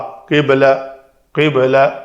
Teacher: با کے اوپر قلقلہ کریں گے، دونوں با